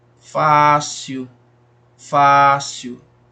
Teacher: fácil né a isso é muito fácil olha aí ó fácil fácil se prolonga mais aí dura mais tempo na pronúncia o fá · Se prolonga mais aí, dura mais tempo na pronúncia, o Fá. Então, como é a antepenúltima sílaba, então é uma paroxítona. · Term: sílaba tônica